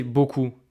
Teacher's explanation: You don't hear the P, right? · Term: consonne finale non prononcée